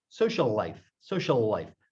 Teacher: The L stretches like 1.5 times a regular L. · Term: Geminates